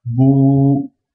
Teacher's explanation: c'est une voyelle longue c'est pour prolonger le ou donc on dit Bou voilà par contre on naccroche rien après